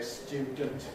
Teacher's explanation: with the schwa vowel, ə, between the d and the n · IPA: ˈstjuːdənt